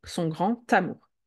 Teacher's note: D devient T, son grand amour. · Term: liaison